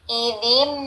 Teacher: Ini bacaan idgham bigunah, tanwin bertemu mim, harus ditahan.